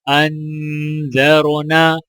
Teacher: حمزہ کو نون کے ساتھ ملاتے ہوئے غنہ کیا جائے گا، اور زال کے اوپر زبر ہے، را کے اوپر جزم ہے، تو لہٰذا زال کو جب را کے ساتھ ملائیں گے تو را موٹی پڑھی جائے گی، اور نون کو الف کے ساتھ ملاتے ہوئے ایک الف کے برابر کھینچ کر پڑھا جائے گا، اور وقف کرنے کی حالت میں بھی نون کو الف کے ساتھ ملاتے ہوئے ایک الف کے برابر کھینچ کر پڑھا جائے گا۔